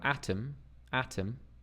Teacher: we have that wide open a sound